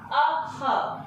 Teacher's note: ये विसर्ग जो है ये कंठ से बोला जाएगा, अह, और जो अनुस्वार है वो किससे बोला जाता है?